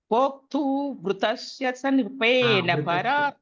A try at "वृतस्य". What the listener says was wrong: Vritashi. I heard it like Vra, so I asked you to repeat it.